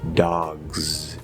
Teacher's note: fully enunciated, if we say it nice and clearly and perfectly, it's supposed to be a Z